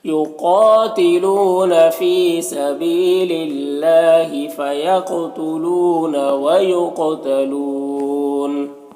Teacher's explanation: قاف حروف مستعلیہ میں سے پر پڑھیں گے، اور قاف حروف قلقلہ میں سے بھی ہے، تو قاف میں قلقلہ بھی کریں گے · یہاں پر اللہ کے لام سے پہلے لام کے نیچے زیر ہے، تو اللہ کے لام کو باریک پڑھیں گے. کھڑا زبر ہے، ایک الف کے برابر کھینچیں گے.